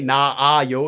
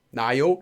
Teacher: Koreans don't necessarily say na a yo, they just say na yo.